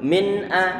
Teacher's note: Jadi nun di sana munculnya. Min tanpa ada suara penahan suara gunnah. Tanpa ada ditahan lama-lama suara gunnahnya. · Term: bacaan izhar